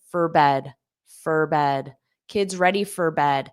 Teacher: this for can become a very unstressed fur